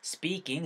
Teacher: S 다음에 TPK 사운드니까 된소리 살짝 만들어서 speaking 사운드 살짝 만들어주세요